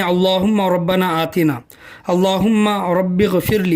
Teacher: ये लफ्ज़ अल्लाह का लाम ही है और उस लफ्ज़ अल्लाह के लाम को हम पुर पढ़ेंगे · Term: लाम को पुर